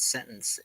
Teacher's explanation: we use what's called a glottal stop in place of the T